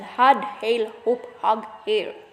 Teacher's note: The glottal fricative H. Initial had, hail, hope, hug, hair